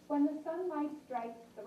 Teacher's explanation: it's a nice clear voice right not raspy not breathy